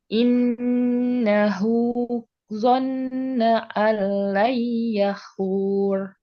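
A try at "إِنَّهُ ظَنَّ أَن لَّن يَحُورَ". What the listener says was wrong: Ada 3, satu lagi belum ditahan. Oke, alnya itu nggak ditahan. Jangan. Double L saja. Yang ditahan Y-nya.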